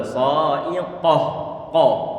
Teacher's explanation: Ini huruf qaf dia termasuk huruf yang punya sifat isti'la. Pengucapannya tadi itu untuk huruf-huruf isti'la, pangkal lidah dia naik ke atas sehingga tebal, tafkhim.